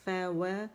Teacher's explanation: پھر آگے ہے فا و, فا باریک ہے, وا نہیں پڑھیں گے, وا موٹا نہیں کریں گے. ہمارے جو ہونٹ ہیں وہ ہمارے دانتوں کو ٹچ نہیں کریں گے, ٹھیک ہے, بلکہ فارورڈ فرنٹ میں ہم پش کریں گے, جیسے او کے لیے کرتے ہیں, او کے لیے کرتے ہیں تو گول ہو جائیں گے, کمپلیٹ رولنگ ہوگی یہاں پر, ٹھیک ہے.